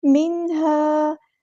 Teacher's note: یہاں پہ نون ساکن کی آواز کو ظاہر کرنا، اظہار ہوگا۔ مِنْهَا نہیں پڑھنا، ہلانا نہیں ہے۔ · الف مد آ گیا تو الف کے برابر لمبا کریں گے، مد اصلی کریں گے